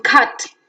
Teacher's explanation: to the central walls we have a as in cut a central between half open and open unrounded